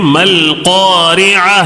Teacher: صرف لام کو پڑھیں گے، الف کو چھوڑ دینا ہے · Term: قمری